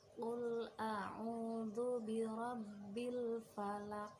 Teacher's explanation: Qalqalah artinya memantul. Nah, di surat Al-Falaq ayat pertama ini huruf qaf dibaca memantul. Huruf qaf di sini termasuk qalqalah kubra.